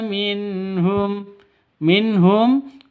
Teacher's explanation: nun mati bertemu dengan ha jelas terang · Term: izhar halqi